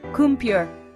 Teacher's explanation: Notice how the middle syllable almost disappears? That's called vowel reduction, and it's super common in English.